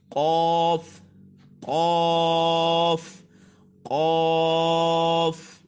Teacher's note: جو قوف ہے وہ حروف مستعلیہ میں سے ہے، اس کو پر کر کے پڑھتے ہیں، یعنی زبان کی جڑ اور تالو کے نرم حصے سے ادا ہوگا